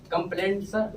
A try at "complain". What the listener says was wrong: Complaint नहीं आएगा. You are making mistake. Complain.